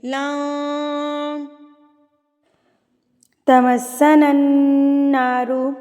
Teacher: کیسے چھپانا ہے کہ نون پڑھتے ہوئے ہماری زبان کا کونا اوپر ٹچ ہوتا ہے، وہ آپ نے ٹچ نہیں ہونے دینا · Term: اکفا